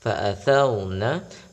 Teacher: Jadi ketika ra sukun sebelumnya adalah huruf yang bertanda fathah, maka dibaca tebal.